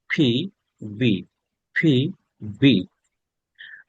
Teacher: এই ফি এবং বি same, দুই ঠোঁট একসাথে করে